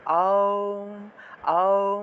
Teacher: আ দিয়ে আরম্ভ করবেন, দেখবেন তারপরে ও আসবে, আ থেকে ও এসে তারপরে উ, তারপরে ম। তাহলে আ দিয়ে স্টার্ট করবেন, এতে করে মুখটা বড় হবে।